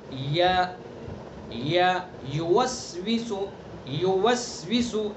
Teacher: اس کا مخرج ہے زبان کا بیچ اور اس کے مقابل اوپر کا تالو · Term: یا متحرک